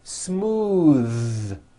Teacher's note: believe it or not the th sound in smooth is voiced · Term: voiced th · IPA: ð